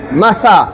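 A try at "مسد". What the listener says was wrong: জম করে বলতে হবে না কলকলা হবে না মাসাদে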